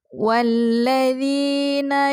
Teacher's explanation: Sukun dan huruf kedua yaitu lam yang bertasydid maka saat membacanya alif lam yang pertama yang sukun tidak dibaca maka dimasukkan kepada lam yang kedua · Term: Idgham Syamsiah